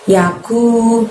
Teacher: maka kita keluarkan hurufnya dari pangkal lidah namun tidak menyentuh langit-langit. Lebih tipis daripada pengucapan qaf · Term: kaf